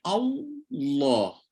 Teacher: Jangan naik mula kemudian turun tengah-tengah. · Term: Lam tebal